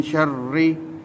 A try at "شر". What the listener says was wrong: रा को पूर्ण नहीं करेंगे, बरीक रा। من شر ما خلق.